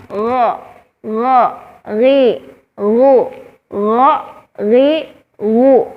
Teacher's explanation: Ketika kita mengucapkan huruf gha, tidak ada nafas yang keluar. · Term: al-jahr